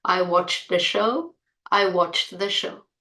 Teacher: 'uh' a, is always linked to the sound before it, it's really hard to hear the difference in spoken English